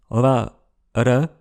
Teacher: c'est un peu comme les consonnes roulées, mais avec une seule vibration. La différence avec les occlusives, c'est qu'on n'augmente pas la pression de l'air derrière. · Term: consonnes battues